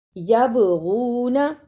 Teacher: با جزم کی صورت میں حرف قلقلہ ہے، یعنی اس لفظ کو ہلا کر پڑھنا ہے